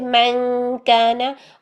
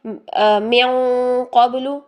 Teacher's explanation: मन काना मिन क़ब्लु, जब नून साकिन तनवीन के बाद हर्फ मोटा आ जाएगा ना तो इख्फा भी मोटा हो जाएगा, उसकी आवाज़ भी मोटी हो जाएगी। ये काफ बारीक था, हम कर रहे थे मन काना, और ये कौफ मोटा है तो हम करेंगे मिन क़ब्लु, मिन मिन, ये कौफ के पास चले गए हम पहले, और फिर नून की आवाज़ को छुपाया, मिन क़ब्लु, ठीक है।